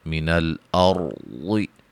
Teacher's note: را کو موٹا ادا کریں گے، ضاد کو موٹا ادا کریں گے